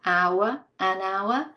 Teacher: because the H is not pronounced here, it's a mute H